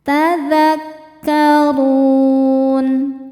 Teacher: Huruf ra dibaca secara tafkhim karena barisnya di atas, yaitu baris dhammah. Cara membaca huruf ra ini adalah dibaca dengan tebal. Ru, pangkal lidah naik.